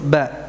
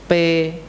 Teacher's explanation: ba yang keluar dari antara dua bibir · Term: huruf ba